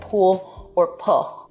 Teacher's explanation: an L turning into a vowel in a word like pool or pull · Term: l vocalization